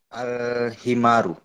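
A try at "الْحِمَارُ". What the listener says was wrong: Naam, ahsanta barakallahu fiik.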